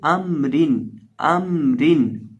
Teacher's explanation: را کو باریک پڑھیں گے، کیوں؟ کیونکہ را کے نیچے دو زیر ہے